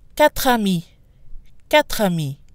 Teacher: We run the sounds together instead of pausing between the two words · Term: run together